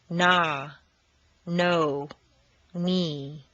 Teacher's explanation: n is nasal air comes out through the nose the tongue is completely relaxed